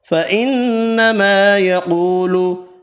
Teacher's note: نون مشدد پر غنہ کریں گے